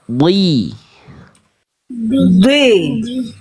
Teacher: naikin pangkal lidah di baru vokal i-nya keluar.